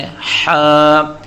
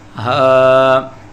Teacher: ہا اور ہا کا فرق، ہا حلق کے درمیان سے دبا کر پڑھی جاتی ہے جیسے ہا، جبکہ گول والی ہا حلق کے نیچے سے نرمی سے نکلتی ہے